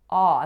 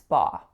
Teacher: We're saying ah, that open, low back vowel.